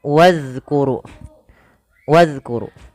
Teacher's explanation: ini tidak dibaca bukan wa uzkuru tapi langsung ke zal wazkuru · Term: zal mati